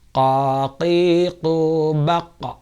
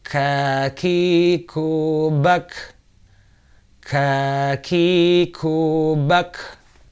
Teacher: Kemudian huruf kaf, kaf lebih depan sedikit dari qaf, qaf lebih dalam ya, munculnya lebih dalam dari huruf kaf. Kaf lebih depan sedikit dan lebih ringan membacanya, tetapi dia termasuk khamas, maka ada hembusan nafas atau aliran udara yang keluar dari tenggorokan.